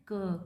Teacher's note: Voiceless हो जाएगा, velar है, प्लॉजिव है, ऑरल है।